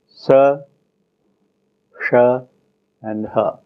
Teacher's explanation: an alveolar, a retroflex, and a glottal, voiceless fricative